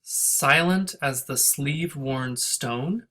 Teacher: this line has a lot of stresses and it starts with a stress